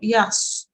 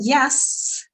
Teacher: the swad is a thick sound, so it's like a full mouth sound